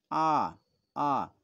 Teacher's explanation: তোমরা যে আ করো, দেখবে জিভটা কি নিচুতে অবস্থান করবে। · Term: আ স্বরধ্বনি